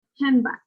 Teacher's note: with handbag, the ND sound will become an M